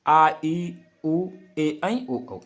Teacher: इनको उच्चारण में 2 मात्राओं का समय लगता है। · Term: दीर्घ स्वर